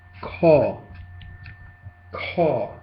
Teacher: That's an aspirated K. Okay? Remember that you have to buff air.